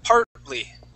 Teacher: we jump right over that T. That T is going to be silent. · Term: T is silent